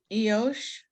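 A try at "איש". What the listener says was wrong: There's no O there.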